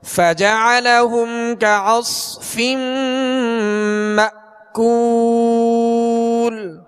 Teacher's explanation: حمزہ پہ جزم ہے، اس کو جھٹکے سے ادا کریں گے